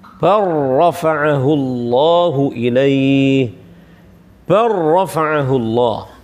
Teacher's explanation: Mengidghamkan huruf lam secara sempurna pada huruf ra sehingga tidak berbekas sama sekali huruf lamnya. Huruf lamnya enggak ada, enggak tampak makhrajnya, ya kan? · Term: idgham kamil